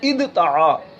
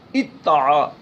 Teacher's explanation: جیسے ادتعا، اب دال اور تا یہ دونوں ایک ہی مخرج سے ادا ہوتے، تا دال تو ایک ہی مخرج سے یہ ادا ہوتے ہیں، تو اب دال چونکہ ساکن ہے تو دال کا تا میں ادغام کیا، تو یہ بن گیا اتعا۔ اب پڑھنے میں دال نہیں آئے گا لیکن لکھنے میں آتا ہے